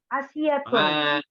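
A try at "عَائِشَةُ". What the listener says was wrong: Aisyatu. Enggak pakai tanwin, Bu. Aisyatu.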